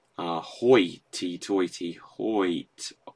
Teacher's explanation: the O-I sound combining together is a diphthong. So if you get now hoit, doesn't sound, that still definitely sounds like it's a single syllable.